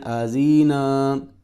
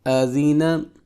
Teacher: تو لمبا نہیں کرنا اس کو، کیونکہ ان تینوں پر حرکات آ رہی ہیں، تینوں حروف پر۔